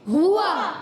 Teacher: ہوا میں ہا پر پیش ہے، واو پر زبر ہے اور واو ہونٹوں کی گولائی سے ادا ہوتا ہے. حرکات ہیں، ہا پر پیش کی حرکت ہے اور واو پر زبر کی حرکت ہے.